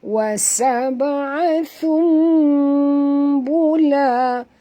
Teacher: Kita kena tukarkan bunyi nun mati kepada bunyi mim. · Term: iqlab